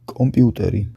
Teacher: Pour transcrire les sons P, T, K des mots d’origine étrangère, on utilise généralement les consonnes éjectives